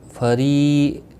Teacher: فری را زیر کی وجہ سے باریک پڑھا جائے گا۔ ری یا مدہ ہے، ایک الف کے برابر کھینچ کر پڑھیں گے۔